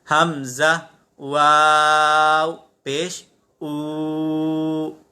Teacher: حمزہ، واو، پیش او. تو واو ساکنہ سے پہلے پیش ہے، اسے ایک الف تک کھینچ کر پڑھیں گے